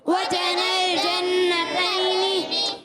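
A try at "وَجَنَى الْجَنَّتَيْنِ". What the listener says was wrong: غنہ کریں. وجن الجنتین دان. مد عارض کو کھینچیں گے.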